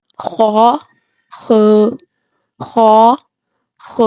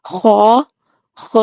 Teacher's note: خا حلق کے اوپر والے حصہ سے ادا ہوتا ہے۔ گلے میں جس جگہ پر ہمیں خراش ہوتی ہے اس جگہ سے خا ادا ہوتا ہے۔